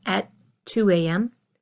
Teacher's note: you hear my T for the number 2 pushes into my word of at